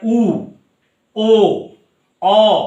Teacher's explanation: জিহ্বা গলার ভেতরের দিকে চলে যাচ্ছে, গুটিয়ে যাচ্ছে, তখন তাকে বলা হচ্ছে পশ্চাৎ স্বরধ্বনি।